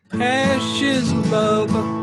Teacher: if you're saying love, you're kind of flicking your bottom lip with your teeth